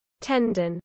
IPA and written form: ˈtɛndən (tendon)